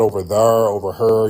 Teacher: A lot of black folks who live by river areas like the Mississippi River, the Ohio River, Kentucky River, a lot of them have that intrusive R